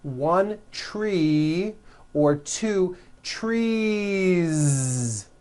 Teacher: you continue the voicing throughout the whole word and add on a voiced Z